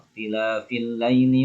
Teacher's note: Kemudian waqtilafil laili itu alif lam syamsiyah, alif lamnya tidak terbaca.